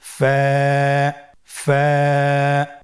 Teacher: ফায়ের মাখরাজ হলো নিচের ঠোঁটের প্যাড সামনের উপরের দুই দাঁতের আগার সঙ্গে লাগিয়ে উচ্চারিত হয়।